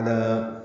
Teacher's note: علی عین وسط حلق سے ادا کریں گے ، لام کو باریک پڑھیں گے، 2 حرکات لمبا کریں گے،